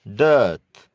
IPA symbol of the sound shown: dɜθ